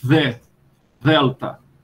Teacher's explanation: O grego moderno pronuncia-o como TH do inglês na palavra the. Então, esse the, aspirado e dental, né? The, delta.